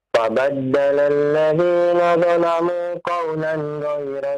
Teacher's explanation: Jangan ditahan nunnya, ya, terlalu lama, ya, karena dia izhar, ya.